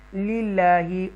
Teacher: یہ یا ساکنہ جو ہے وہ حروف مدہ میں سے ہے. للہ، اللہ کے نام کو ترقی کے ساتھ پڑھیں گے باریک سافٹ